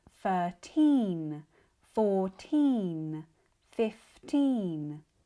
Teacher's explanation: This long e sound we have in 13 14 15 It's an intense sustained long e sound.